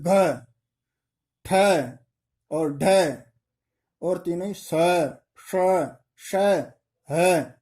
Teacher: इन पर थोड़ा प्राण यानी बल ज्यादा लगाना पड़ता है, इसलिए इन्हें महाप्राण कहते हैं